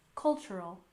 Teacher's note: cultural heritage with a stress on the first syllable in cultural